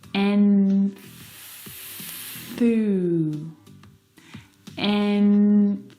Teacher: to move to the TH sound, you need to, of course, bring your tongue down and out through your teeth.